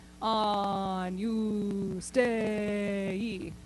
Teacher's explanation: try to spend as much time on the oo as possible